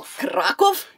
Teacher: you have to roll the R. And you have to put more emphasis on the first syllable